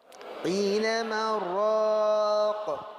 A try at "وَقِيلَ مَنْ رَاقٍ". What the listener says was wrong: ليس من يا إلدي، ليس من، مر، ندغم. إذا لم نسكت ندغم، وقيل من راق، كلا برانا، بر لا يوجد لام، برانا. هذا هو الإدغام، وهذا الذي يفعله غير حفص. يعني غير حفص يقرأ هكذا وقيل من راق. طب لماذا لم يدغم حفص؟ لأنه سكت. لماذا لم يدغم حفص؟